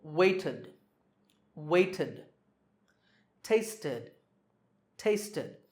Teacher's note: If the last sound in a word is t or d, then the ed ending is pronounced id.